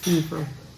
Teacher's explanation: It's long E, fever. The V sound has a voice, not F sound like in Indonesian.